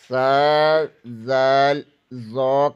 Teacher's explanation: زبان کی نوک ثنائے علیہ کے سرے سے لگے تو سا، زال، ظا ادا ہوتا ہے